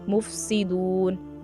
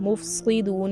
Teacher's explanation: यहाँ पर सीन निकालनी है, स्वाद नहीं बना देना